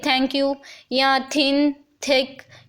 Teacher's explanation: ये T H का दो तरह की प्रोनाउंसिएशन देता है, एक तो थ की और एक द की। थ जो है वो वॉइसलेस साउंड है, उसमें वोकल कॉर्ड्स की वाइब्रेशन नहीं होती।